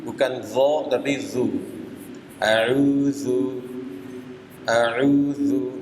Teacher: du auzu auzu dan juga lihat sini tarik bibirnya mundur uu Kenapa mesti mundur karena dalal itu makhrajnya dari ujung lidah